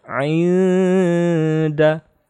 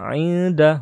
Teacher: nun sukun ketemu dal, ikhfa, harus dengung ya